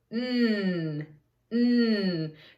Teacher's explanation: it's a nasal sound and sometimes you can even feel it a little bit in your nose